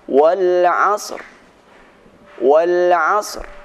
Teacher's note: Cara membaca wal asr, suara sad diberikan suara dengan samar-samar, dan suara ra tetap dibaca dengan sempurna.